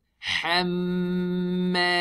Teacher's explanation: Ha is thin, mim is thin, we smile. Ha from the throat.